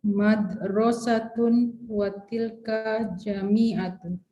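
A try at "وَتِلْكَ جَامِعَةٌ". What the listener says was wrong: Ja-nya panjang, watilka jami'atun.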